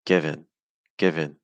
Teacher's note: given as two syllables the stress is on give · the first syllable is a little longer it's higher in Pitch